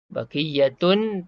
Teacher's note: Idgham ma'al gunnah, mengidghamkan tanwin ni. Baqiyatun, tun jadi tum beserta dengung.